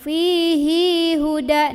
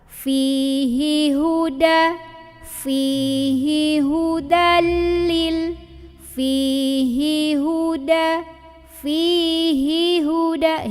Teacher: Hi-nya tetap seketuk, jangan diayun ya, gak ada pemanjangnya. Hudalil, hati-hati sama lam lagi, jangan sampai mantul. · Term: hi tetap pendek